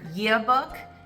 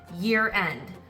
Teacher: in the phrase ends with a vocalic r like year and the second word in the phrase begins with a vowel like end you would hear the r preserved